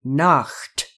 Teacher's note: The word Nacht is the German word for night, and it contains CH, which is a consonant that we do not have in English. It is called a voiceless velar fricative